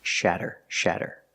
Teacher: we see the fast D sound again with a Double T making the fast D sound